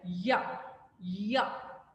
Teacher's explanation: Palatal, produced by front of the tongue and hard palate